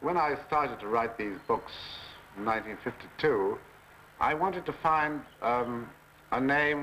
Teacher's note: that's more like an old-time British voice it's much more nasally much more nasally than you might think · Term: received pronunciation accent